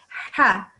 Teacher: it needs to be a little bit thicker it comes from deep in your throat